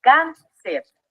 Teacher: dividirlo en sílabas cáncer es aquí donde nos damos cuenta que la sílaba tónica se encuentra en la penúltima sílaba Eso la hace una palabra grave y como termina en r deab tilde o acento ortra ahora